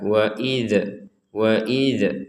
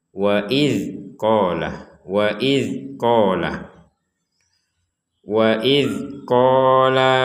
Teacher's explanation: huruf Dal yang bertanda sukun ini jangan sampai kita baca mental atau mantul jangan dipantulkan jadi jangan dibaca waid waid jangan sampai ada pantulan sedikit pun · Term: bukan huruf Qalqalah